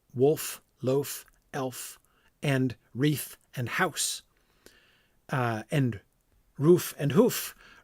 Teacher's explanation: all end with an unvoiced consonant